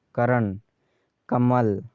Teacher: करण कमल में क्रमश क तथा म पर बल दिया जा रहा है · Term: बल घात